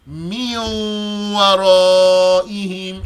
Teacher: So when you recite the Quran, make sure your Ghunnah is nice and clear, not too weak. The duration of the Ghunnah is 2 harakas, 2 counts. And a count is the time it takes to bend a finger or to straighten it. · we bring the Ghunnah out of our nose for the noon that's now gone, fused into the next letter. That Ghunnah is the evidence that there was a noon there.